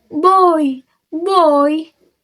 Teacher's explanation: oi pada boy dari o ke i